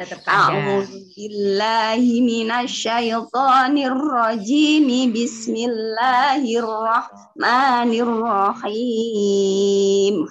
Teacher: ta'awudz sama bismillahnya dijadikan satu, terus berhenti. Jadinya rahim tetap panjang.